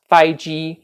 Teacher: it's the first tone all the way across